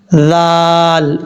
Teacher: اب اس کے بعد جو لام کے بعد جو ذال ہے، یہ ذال بغیر سیٹی کے ساتھ پڑھا جائے گا۔ اس کا مخرج ہے زبان کا سرا اوپر والے دانتوں کے اندرونی کنارے سے لگے تو ذال پڑھا جاتا ہے بغیر سیٹی کے · یہ ذال بغیر سیٹی کے ساتھ پڑھا جائے گا۔ اس کا مخرج ہے زبان کا سرا اوپر والے دانتوں کے اندرونی کنارے سے لگے تو ذال پڑھا جاتا ہے بغیر سیٹی کے، ذال، اس طریقے سے۔